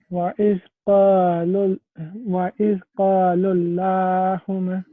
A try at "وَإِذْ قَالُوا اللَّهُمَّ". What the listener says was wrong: You made a mistake. Can you correct this mistake again? With the lam here, you made a mistake.